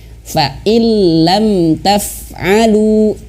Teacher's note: seolah-olah huruf lamnya ini ada tasydidnya